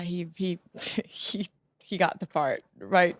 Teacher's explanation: faz esse som típico do inglês que nós esperamos, que é um som curto e seco do T